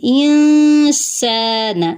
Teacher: ان، حمزہ کے نیچے زیر ہے، اس کو نون سے ملائیں گے۔ اب نون ساکن کے بعد سین ہے تو یہاں پہ اخفا کریں گے۔ انسان، سا پہ الف مدہ ہے، سین میں سیٹی ہے، نون کی حرکت لمبی نہیں ہوگی۔